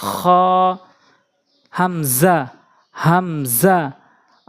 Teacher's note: হলকের শেষ থেকে হামজা